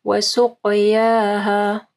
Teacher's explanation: ناقۃ اللہ، پہلا ہی لام کو جو ہے نا ہیوی پڑھنا ہے۔ وسقیاها، قاف کو ہیوی پڑھنا ہے اور الف مدہ کو آخر میں پڑھنا ہے